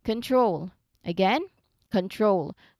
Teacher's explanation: So it's a precise T blending into R. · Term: TR sound